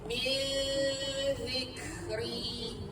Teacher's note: Nun termuzal ni ikhfa haqiqi. Dia jenis dengung yang tersembunyi samar-samar. Dan kita rapat bibir.